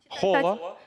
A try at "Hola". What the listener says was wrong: Аче не читається.